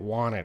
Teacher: That T is very reduced.